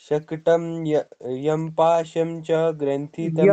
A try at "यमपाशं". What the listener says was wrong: यम पाशम, यम म पूरा बोलना है, यम पाशम, यम म म पूरा बोलिए, यम यम